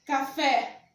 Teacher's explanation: a sílaba tônica é a fé café e ela é acentuada